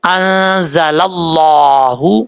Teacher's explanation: لفظ اللہ سے پہلے زبر یا پیش ہو تو لفظ اللہ پر پڑھا جاتا ہے، یعنی موٹا پڑھا جاتا ہے. تو یہاں پر موٹا پڑھیں گے انزل اللہ. · جب لام کو لفظ اللہ کے لام سے کے ساتھ کنیکٹ کریں گے، ملائیں گے، تو بیچ میں الف اور لام دونوں حرفوں کو ہم چھوڑ دیں گے